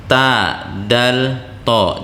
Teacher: punggung kepala lidah disentuhkan dengan dua buah gigi seri atas nah jadi bukan ujungnya yang disentuhkan ke dua buah gigi seri